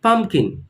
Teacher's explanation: the stress is on the first part of the word pumpkin so repeat once more with me pumpkin now look at this